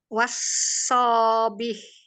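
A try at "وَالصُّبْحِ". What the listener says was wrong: Enggak, ini harakatnya domah.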